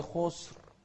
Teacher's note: والخاء مفخمة، والراء هني المتطرفة أيضا مفخمة ساكنة، بس قبلها ساكن وقبل الساكن مضموم.